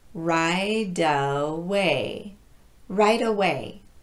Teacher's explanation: And now I need to mention something about linking final T to a vowel. If that T is falling between vowel sounds as the two words are linked, we tap the T. Some people call this a flap T.